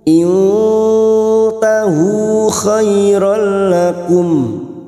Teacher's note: Nun sukun bertemu ta ikfa hakiki kita samarkan bunyi nun sukun dan mendengung selama 2 atau 3 harakat.